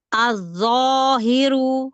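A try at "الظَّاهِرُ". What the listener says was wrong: Tahan dulu dho yang pertama, yang sukun. Az-zo.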